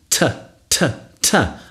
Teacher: Another plosive using the tongue and the alveolar ridge. That's that bony bit above your front teeth.